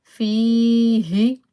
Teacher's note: ha from the lowest part of the throat